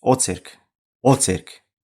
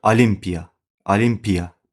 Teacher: Bax, İ-yə düşür vurğu. Vurğu İ-yə düşür deyə o sözü A kimi tələffüz olunur.